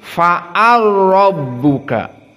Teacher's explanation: dijadikan idgham alkabir jadi fa'arbuka masuk lam kepada ro